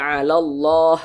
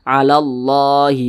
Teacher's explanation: kalimat Allah dibaca tebal dibaca tkhimnya